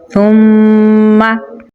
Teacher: मीम के ऊपर तशदीद है तो यहाँ पर गुन्ना करेंगे, मीम की आवाज़ को नाक में लेके जाएंगे